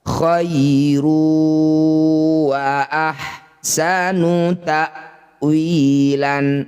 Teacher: Dzalika khairu wa, dhammah tanwin bertemu waw, disebut bacaan namanya idgham bi gunnah. Cara bacanya bunyi dhammah tanwin, masukkan pada huruf waw, dengungkan 2 harokat.